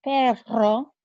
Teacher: When you have two of them together, like in the word perro, for dog, your R is rolled.